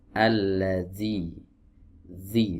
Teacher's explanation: Ini ujung lidah bertemu dengan ujung-ujung gigi seri bagian atas. Alladzi dzi digesekan, ya. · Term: huruf zal